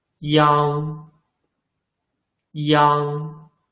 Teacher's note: But when we pronounce N, the back part of tongue, The back part of your tongue forms an arch, and the root of the tongue moves back and presses the soft palate. In this case, the mouth more wide open.